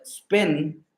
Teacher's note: word spin so here the the the P the alone of the P that is present is the unaspirated P